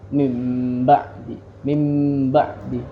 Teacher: Karena makhraj huruf mim berada di bibir dan ba juga di bibir ya. Mim dan ba dia di bibir karena sempurna di situ.